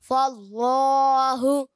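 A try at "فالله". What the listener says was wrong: فاللہ اچھا اگر ناک میں تھوڑی آواز جائے فاللہ ہوں نہیں ہونا چاہیے ہا پیش ہو فاللہ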